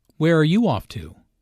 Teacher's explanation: notice the falling intonation since this is an information question not a yes no question